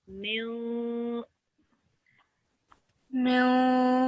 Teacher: So we will do a light nasal sound for 2 seconds.